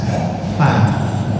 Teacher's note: Tempatnya bibir bawah bagian dalam dengan gigi seri atas. Fa. Jangan buat bibir, jangan fa. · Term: huruf fa